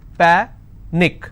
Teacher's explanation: Panic is pa-nick, which means I will stress on pa and it's pronounced as panic.